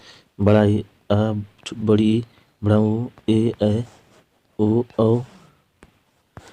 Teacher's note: जिस स्वर के उच्चारण में ह्रस्व स्वर से 2 गुना समय लगता है उन्हें दीर्घ स्वर कहा जाता है।